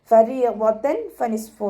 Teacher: തെൻവീനിന് ശേഷം ഇഖ്ഫാഇൻ്റെ ലെറ്ററായിട്ടുള്ള ഫ വന്നു. തെൻവീനിലുള്ള നൂനിൻ്റെ സൗണ്ടിനെ മറച്ചു വെച്ച് മണിച്ചോതി കൊടുക്കുക. നൂനിൻ്റെ സൗണ്ടിന് വ്യക്തമായിട്ട് കേൾപ്പിക്കരുത്.